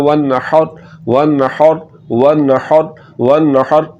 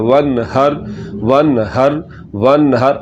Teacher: اب آگے آ جائیں، یہاں پر ہا ہے تو ہا، اس ہا کو ہم میں سے بہت کم لوگ ہیں جو اس ہا کو نکالتے ہیں۔ تو اس ہا کو حلق کے درمیان والے حصے سے نکالنا ہے